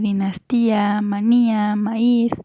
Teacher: cuba llevan acento porque a separar la palabra decimos a y hacemos fuerte a una vocal que normalmente sería débil